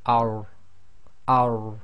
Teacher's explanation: the tafkhim is really done by lifting the back of the tongue a little bit.